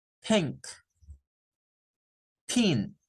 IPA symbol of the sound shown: θ